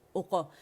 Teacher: او موٹا نہیں کریں گے. اچھا قاف جو ہے اس پہ موٹا قلقلہ کریں گے, اوقا. اچھا فتح کے لیے ایک کاؤنٹ کے لیے ہمارا جبڑا کھلتا ہے, آواز ایک کاؤنٹ کے لیے اوپر جاتی ہے, لیکن جب ہم قلقلہ کرتے تو ہاف زبر کی طرح آواز اوپر جائے گی, سائیڈ ویز نہیں جائے گی.